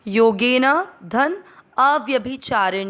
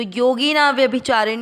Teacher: योगेन का अ और अ व्यभिचार का अ अ और अ मिलकर आ बन जाएगा